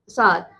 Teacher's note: ये बोला जाता है दांत से, तो इसको दंत सा बोलते हैं